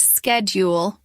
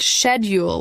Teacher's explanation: Americans pronounce it schedule with a hard k sound at the beginning. British speakers pronounce it schedule with a soft shh sound.